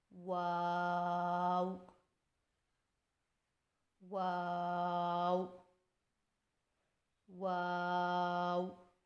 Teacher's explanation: پھر سے ہونٹوں کو چونچ کی مانند گول کرتے ہوئے باریک آواز میں پڑھیں، یعنی واو واو واو.